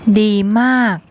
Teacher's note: Okay, it's the morma M consonant, the long R vowel, and then the gorgai, which makes an unreleased K sound as a final consonant